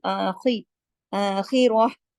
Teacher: अच्छा, आपने खा को तो मोटा करना ही करना है, चाहे उसके ऊपर जेर जबर पे जो भी हो, क्योंकि खा तो खुस्सा के 7 जो मोटे हरूफ है उनमें है। खा भी मोटा होगा, यहाँ पर रॉ भी मोटा होगा, क्योंकि रॉ पे जबर